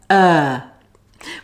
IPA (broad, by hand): ɜː